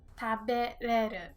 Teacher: We omit this ra in the middle and say 食 べ れ る when speaking informally. 食 べ れ る This is called ら 抜 き 言 葉 Ra is the ra and nuki is like without or nuki means to pull so it's kind of like pulling out ra.